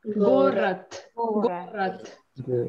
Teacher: Я пишу город, но говорю т.